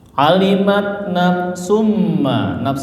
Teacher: domatain ketemu huruf mim ya. Jadi melebur ya, masuk ke mim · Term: idgham biguna